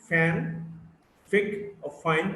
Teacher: You got the F, which is a voiceless labiodental fricative